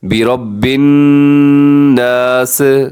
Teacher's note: سین میں سیٹی کی آواز ہوتی ہے